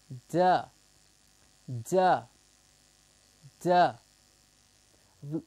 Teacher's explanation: we are obstructing it by our tongue the tip of the tongue behind the top teeth to give us duh duh duh we are vibrating our voice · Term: voiced consonants